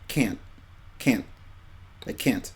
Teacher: you might not hear the t clearly some people don't pronounce it that hard but it's more of a just a stop or whatever or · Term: soft tee